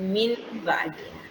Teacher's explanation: Mengganti bunyi huruf nun menjadi bunyi mim, bukan?